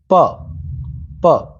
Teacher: अघोष जिसमें कंपन न हो